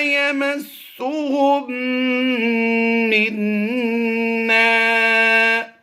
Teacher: یہاں پر جزم والی میم ہے اور یہاں پر شد والی میم ہے. جزم والی میم کو ہم سائلنٹ کر دیں گے اور شد والی میم کو پڑھیں گے